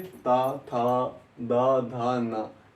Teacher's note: जीभ हर बार दांत को स्पर्श कर रही